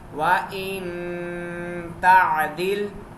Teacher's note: تا بھی باریک ہے, عین باریک ہے, دال باریک اور لام بھی باریک ہے